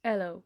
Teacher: a British might pronounce the word hello with speaking the her sound without speaking the H sound, that is hello.